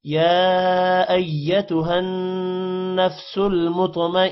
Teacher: ایتہن نون پر غنہ ہوگا. نفس المطمئنہ تو کو موٹا کریں گے اور نون پر غنہ کریں گے تا ہا میں کنورٹ ہو جائے گا وقف کی وجہ سے